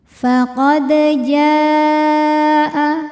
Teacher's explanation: Di sini ada hukum tajwid namanya qalqalah sughra, sebab huruf qalqalahnya yaitu dal, sukunnya asli bawaan dari kalimat tersebut dan ada di tengah bacaan kita. Maka cara bacanya dipantulkan dengan pantulan yang kecil.